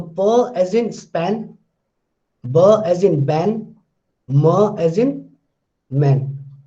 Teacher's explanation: All these three, all these three are bilabial. All these three are stops as well.